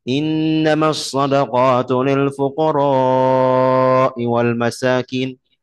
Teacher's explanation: Nabi mengajarkan saya memanjangkan fukoro itu. Jadi kalau dalam teori berarti nanti misalnya mat tabi'i ketemu hamzah kan begitu.